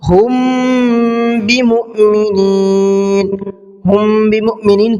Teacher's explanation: ہم بمؤمنین، ہم بمؤمنین کے اندر یہاں میم ساکن کے بعد میں با ہے، تو یہاں پر اخفاء شفوی کا قاعدہ ہے، اس لیے تھوڑا سا غنہ کر کے اور اخفاء کر کے پڑھیں گے